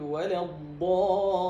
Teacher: طبعا اللام من حروف البينية، يعني فيها شيء يسير من امتداد الصوتي هنا